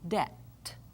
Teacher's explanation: you don't hear the little B sound in there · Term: silent letters